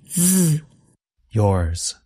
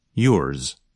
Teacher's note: If you listen carefully, you can hear a bit of the sound of the letter S at the end of a word like yours. So the sound of Z is not as strong or as long as in a word like zero. Instead, it's more like a Z with a little S at the end.